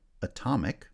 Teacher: stress has shifted to the second syllable